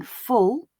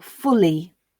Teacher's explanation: think about the difference between saying full with dark L or fully with clear L